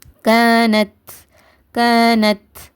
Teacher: பத்ஹாவை தொடர்ந்து அலிப் மத்தா வந்ததுன்னா இது என்னது மத்தா அஸ்லி அதனால இரண்டு ஹரக்கத் நீட்டி ஓதுங்க அடுத்து சுக்குன் பெற்ற த இருக்குது இத நார்மலா இத்துன்னு மட்டும் சொல்லாம காற்றை வெளிப்படுத்தி உச்சரிங்க